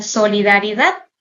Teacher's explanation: La sílaba tónica la encontramos en la última sílaba de la palabra como tal.